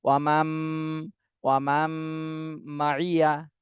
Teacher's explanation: নুন সাকিনের পরে ইদগামে বা গুন্নার হরফ মিম এসেছে, এই জন্য গুন্না সহ আমাদেরকে মিলাতে হবে এই মিমের সাথে।